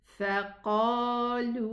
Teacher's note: 2 counts for the alif, 2 counts for the waw.